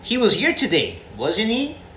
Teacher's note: They're both tag questions, and they both have rising intonation.